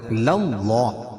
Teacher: اللہ کے لام سے پہلے زبر ہے تو اللہ کا لام پور پڑھا جائے گا